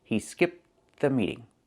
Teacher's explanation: Because you have that TH sound, the meeting, after, they blend together, and you don't really hear that T sound.